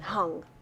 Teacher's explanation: this guttural is like top of the back of the tongue to the top back of the mouth